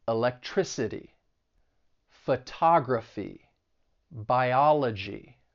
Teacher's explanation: the stress is going to be on the third to last syllable. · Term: syllable stress rule